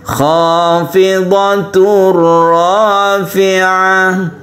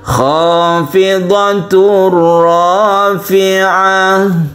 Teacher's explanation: tanwin bertemu ro ini adalah idgham bila guna dan dia itu tidak guna atau tidak berdengung